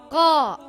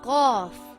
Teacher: it comes from the back of the mouth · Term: heavy letter